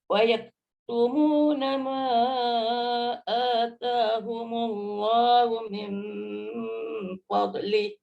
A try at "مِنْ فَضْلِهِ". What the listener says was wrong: Min fadlih. Jangan qalqalah.